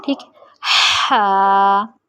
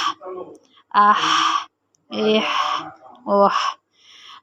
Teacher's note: تو یہ آپ کی آواز نکلے گی حلق کے درمیان سے، وسط حلق سے